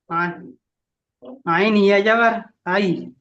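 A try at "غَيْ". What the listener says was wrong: ও ভাইজান আইনের নক্তা আছে, এইটাই বলেছি আমি, এই দাগ দিয়েছি দেখা পাচ্ছেন?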